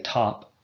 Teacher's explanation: you can say top without engaging your voice box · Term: unvoiced